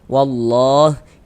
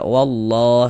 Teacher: Jadi kalau baca Al-Quran bertemu lafaz Allah, sebelum lafaz Allah ada tanda baca fathah, maka lafaz Allahnya dibaca tabkhim, dibaca tebal. Jadi huruf lam jalalahnya tuh dibaca tabkhim, dibaca tebal, sehingga kita baca wallah seperti itu.